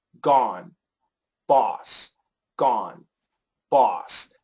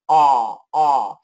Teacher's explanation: the aw requires the tip of your tongue to go into the soft part and your jaw needs to go down